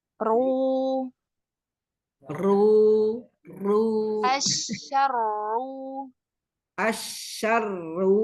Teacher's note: ketika mengucapkan huruf ro-nya pangkal lidahnya naik